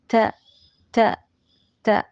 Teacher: സീനിൻ്റെ ശബ്ദം ഇടയ്ക്ക് കയറരുത് കേട്ടോ. ത ക്ലിയർ ആയിരിക്കണം.